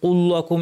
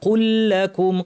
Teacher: কফ ভারী লাম পাতলা · কু কু ভারী কিন্তু লাম যেন ভারী না হয়, অনেকে কুল লাকুম এরকম বলেন, লাম ভারী হবে না।